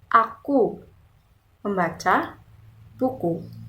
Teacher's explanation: kata aku dibaca tinggi kata membaca dibaca sedang dan kata buku dibaca rendah namun maknanya tetap sama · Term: tinggi rendahnya suara, nada